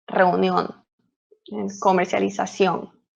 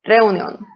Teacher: So if you can hear how I pronounce it, I put the strongest accent, or I pronounce more the last part of the word.